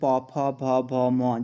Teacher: अगर आप प वर्ग की बात करें तो जब आप इनको उच्चारण करोगे तो आपके ओंठ आपस में मिलेंगे